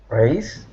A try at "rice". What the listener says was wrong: It's rice. So try to make that these two vowel sounds into one vowel sound. Rice. This is rice, like the grain.